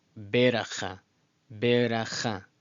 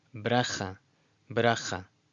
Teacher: Between the B and the R, there's a tiny, almost unnoticeable or sort of sound that's just automatically pronounced between the two letters. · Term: shva